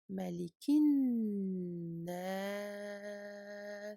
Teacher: le lam ici ne se lit pas, il est grisé parce que derrière lui, il y a une shadda et surtout une lettre shamsiyah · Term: lettres solaires